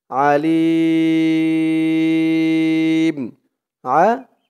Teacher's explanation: অক্ফ থাকার কারণে আলিম 3 আলিফ টান হয়েছে লি বলে 3 আলিফ টান দিয়ে এই মিমকে ধরেছে মিমের উপরে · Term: মদ্দে আরজি